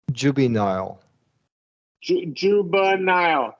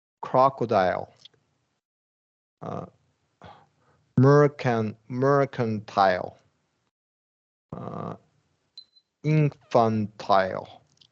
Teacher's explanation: So all of these, that middle syllable vowel turns into a schwa because the middle syllable is unstressed.